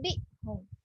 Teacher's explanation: Okay, bila dengung kat sini, cara untuk baca iklab, bibir kita ni tak sentuh. Ada ruang sikit.